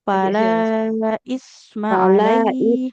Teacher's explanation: huruf sa ujung lidahnya menempel ke ujung gigi di atas